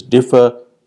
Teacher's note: the word differ has stress on the first syllable